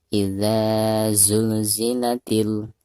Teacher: ketika kita membaca idza, di sini harus dipanjangkan 2 harokat. Kenapa? Karena ada harakat fathah zal, lalu di depannya ada alif sukun, maka dihukumi mad tabi'i dan dibacanya 2 harokat.